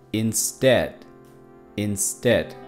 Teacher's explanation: el sonido e que va al principio es más corto es Dead instad porque el acento bueno el sonido que sube